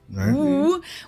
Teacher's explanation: Another sound that we don't have in German is the English W sound, the Woo, where you really don't even touch anything with your lips or teeth